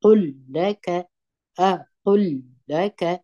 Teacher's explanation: لام به دوه واره ادا کوي مګر ازانګه به نه ورکوي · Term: ادغام